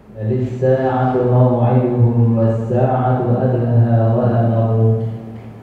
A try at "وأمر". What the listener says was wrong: بس الشد بقى، المنكان على الشد، وأمر.